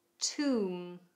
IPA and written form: tu:m (Tomb)